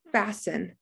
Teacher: i don't hear the t if we could hear the t the word would be fast in but that's not how we say fasten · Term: silent t